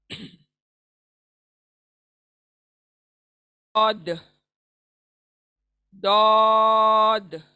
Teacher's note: हमारी जबान की जो करवट है, यानी साइड में जो बोलते हैं ना जबान की करवट, वो दाढ़ों को लगनी चाहिए, हमारे ऊपर के दाढ़ों को लगनी चाहिए।